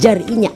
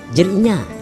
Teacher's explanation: And the last one is JAR INYA, but in Banjar Kuala the JAR becomes JER